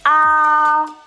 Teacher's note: thanh 1, cái âm vực của nó, tức là độ cao của âm thanh từ đầu âm đến cuối âm không thay đổi